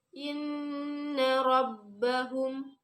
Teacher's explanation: Yang pertama adalah gunnah, yaitu terdapat nun bertasydid, dibaca dan ditahan 2 harokat